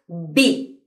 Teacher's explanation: juntamos los labios hicimos be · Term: explosiva